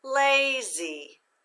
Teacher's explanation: we're going to accent the first syllable